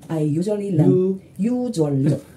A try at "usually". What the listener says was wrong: 왜냐면 이 소리의 핵심은 usually예요. U가 들려야 되는 건데 이게 한국식 발음으로 음절 단위로 지금 끊어지는 거거든요. 그러니까 usually 할 때는 you 지나치게 길게 연습을 하시면 좋아요.